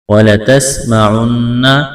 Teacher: سین میں سیٹی کی آواز پیدا کریں گے، سین کو باریک کرنا ہے، نون مشدد ہے، آواز ناک میں چھپائیں گے، غنہ کریں گے